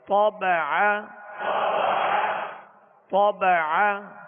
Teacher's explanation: طا کو پر پڑھیں گے اور عین کو درمیان حلق سے ادا کریں گے.